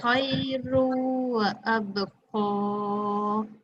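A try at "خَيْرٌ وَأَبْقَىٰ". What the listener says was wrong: Lebihkan dengung dia. Khairun. Jadi bila kita sebut rung tu mulut kita dah mula moncong untuk waw.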